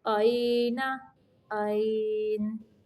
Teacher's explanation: یہاں پہ دیکھیں یا ساکن کے پچھلے حرف کے اوپر زبر ہے تو یہ یا لین ہے، نرمی سے پڑھیں گے